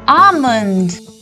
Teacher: Many a times we pronounce this as almond, but here we have to mute the L and we say almond.